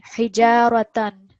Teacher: So he is 1 second. Ja is 2 seconds because of alif madda. Ra is 1 second. And then tan we have tanween.